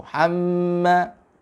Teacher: Ya, mulut kita tertutup rapat. Ya, tidak ada keluar suara lewat mulut ketika mimnya musaddadah, ketika mimnya bertasdid. · mimnya bertasdid, ditahan dulu sampai suaranya, ya, porsinya menyeluruh keluar dari khoisum, pangkal hidung kita. Ya, mulut kita tertutup rapat.